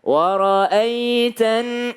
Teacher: Kalau ada ya sukun, sebelumnya ada fathah, bacanya ai, ye, ya, ai, bukan e. Jangan jadi bukan wara'aitan, salah kalau pakai e, wara'aitan nasa karena banyak orang ya.